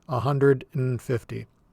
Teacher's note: We won't say the word and as a full word. You'll just hear this N sound